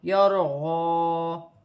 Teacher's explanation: را ساکن سے پہلے زبر ہے تو را موٹی پڑی جائے گی. غاد پر کھڑی زبر ہے تو غاد ایک الف کی مقدار کھینچ کے پڑھی جائے گی